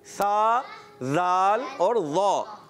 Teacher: सा, ज़ाल, ज़ा, ये 3 हुरूफ ज़बान का सिरा और ऊपर के दांतों के अंदरूनी किनारों से ये हुरूफ अदा होते हैं